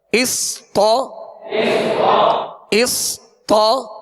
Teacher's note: صاد ساکن ہے، سکون ہلنے نہ پائے، اس، طا زبر طا، طا کی زبر دراز نہ ہو، بغیر کھینچے بغیر جھٹکا دیے آواز اور منہ کھول کر پڑھیں گے